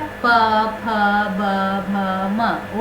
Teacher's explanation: ओठ दोनों टकरा रहा है, इसीलिए ओष्ठ व्यंजन